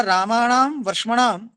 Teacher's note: मूर्धन्ययोः रसयोः प्रयत्न महिम्ना दंत्यो नकारो मूर्धन्यताम आपद्यते